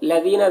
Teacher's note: دال کو باریک پڑھیں گے، یہاں پر یا مدہ ہے